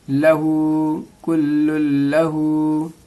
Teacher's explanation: यहाँ पे आप देखेंगे डबल तशदीद है, इस्लाम पर भी और इस्लाम पर भी, तो इसको इस तरह से पढ़ते हैं, लाम लाम दो पेश लुल, कुल्लुल, लाम ज़बर ला, हा उल्टा पेश हु, हा उल्टा पेश को एक अलिफ के बराबर खींचेंगे, मद है, लहू, कुल्लुल लहू।